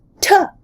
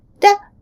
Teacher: T is a voiceless alveolar plosive, aspirated. Da is a voiced alveolar flap. They're allophones of the same phoneme t. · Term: flap or a tap